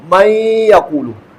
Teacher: نون کو یا میں داخل کر کے پڑھنا ہے۔ من یقول، نون ساکن کی آواز یا کے ساتھ اکٹھی آ رہی ہے۔ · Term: ادغام